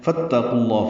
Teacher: فا کو تا سے ملائیں گے، قاف پر پڑھیں گے اور قاف کو لام سے ملانا ہے، لام اسم جلالہ کو بھی پر پڑھنا ہے.